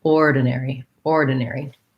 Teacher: this is a case where it is actually an or and we say it with stress so we have a little bit of length on that first syllable